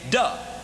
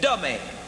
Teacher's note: he had no no th sound in the language. So he converted by saying duh.